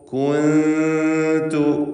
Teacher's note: സാക്കിനത്ത് ആനൂനും ശേഷം താവും ഇഖ്ഫാ ഹഖീഖി നൽകുക. മറച്ചു മണിച്ചുച്ചരിക്കുക. മണിക്കൽ 2 ഹറക്കത്തിൻ്റെ അളവിലാണ്.